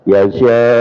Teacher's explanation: Nah, jadi pada yasya ya di sini lebih panjang ya. Kenapa? Karena ee mad ketemu dengan hamzah yasya.